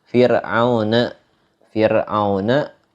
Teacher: Fir'auna, hukum ro-nya dibacanya tipis